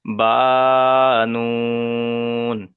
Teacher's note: বাটা এক আলিফ পরিমাণ টান আর তারপরে নুনটা তিন আলিফ পরিমাণ টান সেজন্য বাটাকে এক আলিফ পরিমাণ টান দিতে হবে আর নুনটাকে তিন